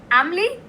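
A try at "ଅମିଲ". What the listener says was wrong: Yeah, Amil, not Amli. I-L, not L-I.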